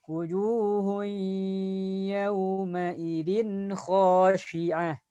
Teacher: Jadi y-nya itu tahan 2 harakat. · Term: idgham bi gunnah